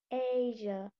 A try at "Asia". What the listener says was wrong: Chữ AI ở đây á, mình đọc bằng cách là mình kéo ra y dài nhá. Nó y ngắn thôi nhưng mình chuyển thành y dài nhá. Chứ mình không đọc là Asia nhá. Nó là lớp AI đó.